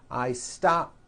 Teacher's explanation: stop ends with an unvoiced P